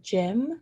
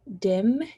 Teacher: And then also, this one's more towards the front of the word, saying dim instead of gym. So instead of that GY, replacing that GY with a DI sound, a dim. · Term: deaffrication